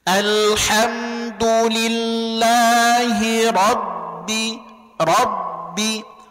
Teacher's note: rnya tebal bnya tipis maka rnya posisi ngambek bnya sudah posisi senyum · Ra-nya tebal, ba-nya tipis.